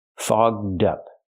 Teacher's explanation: We have to use the open vowel a and the voice g and d fogged up. To help with pronunciation, link the d sound to the second word up. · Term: open vowel aw